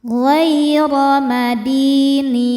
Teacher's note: Di hukumnya mad tabi'i dhahiri karena ada ya sukun sebelumnya kasrah. Cara bacanya panjang 2 harokat.